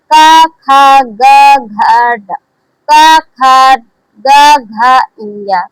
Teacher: जो दूसरा और चौथा वर्ण होता है वह महाप्राण होता है।